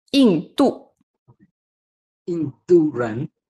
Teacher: so they are both the fourth tone